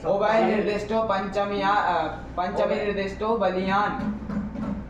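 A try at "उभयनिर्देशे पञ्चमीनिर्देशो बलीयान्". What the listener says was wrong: क्या है नियम, क्या परिभाषा कहे थे? निर्दिष्ट कहाँ है उसमें? निर्दिष्ट कहाँ है उसमें? उभय निर्देश है।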